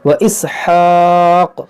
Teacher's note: जब यहाँ पर वक्फ करेंगे तो काफ में कलकला होगा क्योंकि ये ज़बर साकिन हो जाएगा